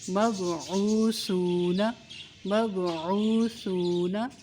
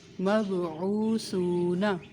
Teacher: سا کو بہت نرمی سے پڑھنا ہے، سا کی آواز میں سیٹی کی آواز نہ آئے۔